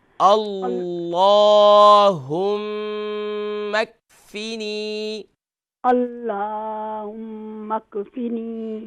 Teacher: اللہ کا جو نام ہوتا ہے اس کے اوپر کھڑا زبر ہے، اسے ہم ایک الف کی مقدار کھینچیں گے